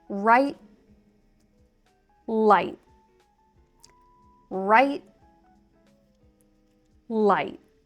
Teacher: I drop the T's at the end. It's a stopped T sound in American English.